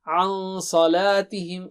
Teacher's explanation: نون کو چھپائیں گے آپ اور اس کو غنہ اور ڈبل حرکت سے کریں گے